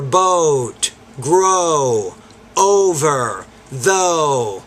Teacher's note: So in American English, we make these sounds pretty long, unlike British English.